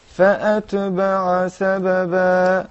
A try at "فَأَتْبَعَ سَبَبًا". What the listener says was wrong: Why did you move the ta? فأتبع سببا. Right? It doesn't have vowel. It's a sakina.